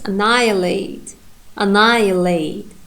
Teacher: In the second syllable, ni, we have primary stress.